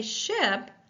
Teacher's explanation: when I say ship I do not feel the vibration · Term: voiceless sh